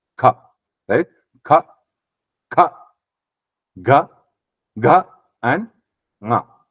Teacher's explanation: we know it is from the throat, kind of just in front of throat, back side of the palate. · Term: gutturals